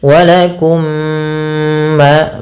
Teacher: masukkan mim yang pertama kepada mim yang kedua dan ditahan. Walakum ma, baru dilepas. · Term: idgham mimi